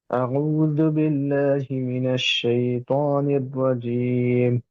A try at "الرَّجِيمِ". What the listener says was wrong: রটা আরেকটু মোটা নিও, রাজিম।